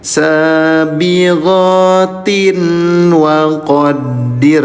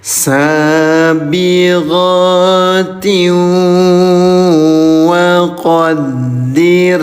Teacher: Idgham itu memasukkan biguna dengan dengung. Jadi memasukkan bunyi tanwin ke huruf wau didengungkan selama dua harakat namanya idgam bigunah